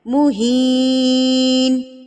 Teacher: حروف مدہ یا مدہ یہاں پر آ گیا، تو اس کو ہم نے ایک حرکت کے برابر کھینچنا ہے